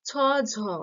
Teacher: ছ, ঝ তালুতে স্পর্শ করছে, তাই এটা মহাপ্রাণ, কিন্তু স্থান অনুযায়ী এটা তালব্য ধ্বনি